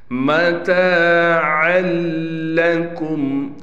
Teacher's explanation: لام پر تشدید ہونے کی وجہ سے تھوڑا ٹھہراؤ بھی کریں گے، میم پر غنہ نہیں کرنا۔